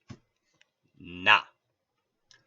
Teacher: We can also make sounds by redirecting the flow of air. If we redirect this flow of air through our nose, we create the sound na. Since we pronounce na the same with help of the nose, it's called a nasal consonant.